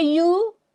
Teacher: there the u is actually made up of two sounds actually u is made up of two sounds can you hear the two sounds when i say you it's the e sound and the long uh sound